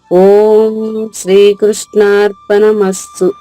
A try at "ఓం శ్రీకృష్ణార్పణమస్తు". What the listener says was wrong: బాగుందమ్మా, బాగుంది.